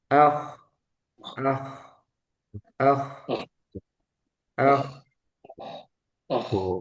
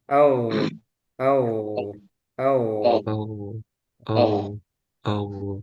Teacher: kalau K dia hames udaranya keluar